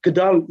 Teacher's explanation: Gedal is easier because G is velar, and D is closer to the outcome, the dental.